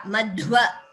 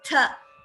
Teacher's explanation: So if we don't apply Ghosha, the Dha and Tha are heard very similarly.